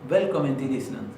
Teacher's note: Pero fíjense que la N casi no sonó